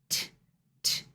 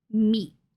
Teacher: So instead of pushing out the air, t, t, you will put your mouth and your tongue into the T shape, but you will stop the air.